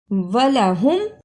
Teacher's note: اسے وَلَاهُمْ نہیں پڑھنا، واو پر زبر، اسے جلدی پڑھنا، لام پر بھی زبر ہے، اس کو بھی جلدی پڑھنا ہے۔ ہاں کو میم سے ملانا ہے پیش کے ساتھ، وَلَهُمْ، ولا يحسبن الذين كفروا أنما نملي لهم خير لأنفسهم إنما نملي لهم ليزدادوا إثما وَلَهُمْ عَذَابٌ مُّهِينٌ۔